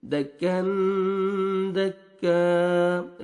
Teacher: یہاں پہ آپ نے اخفاء کرنا ہے، نوز میں ساؤنڈ لے کے جائیں گے